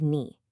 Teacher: that nice rising second tone for you